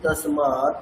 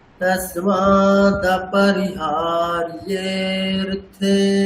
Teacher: এখানে কিন্তু দয়ের পরে একটা অকার আছে, তাহলে অকারটাকে আমি মিস করে যাচ্ছি। तस्माद् এখানেও সে একই, এখানেও তসমা, তসমাদ পি দিয়ে বললে হবে না, তসমা দপি, দপি বলতে হবে, দ পয় রস্যি।